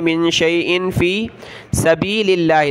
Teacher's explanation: من شيء في سبيل الله نون ساکین کلرفل ہے اور یہاں حمزہ کے نیچے دو زیر تنوین کلرفل ہے دونوں جگہ ناک میں آواز پیدا کرنی ہے